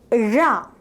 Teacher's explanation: While producing the sound, the tongue tip is curled back and it reaches towards the palate, making a partial closure. The air is let out through the sides as well as over the tongue with a slight friction.